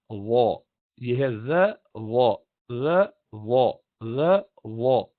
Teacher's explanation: ابتدان اگر سمجھ میں نہ آئے تو تھوڑا سا ایسے منہ گول کر کے بھی بول لیتے ہیں تو اس سے نکل جاتا ہے. اصل میں تو ہے وا, زبان کی جو جڑ ہے اس کو اوپر کرنا ہے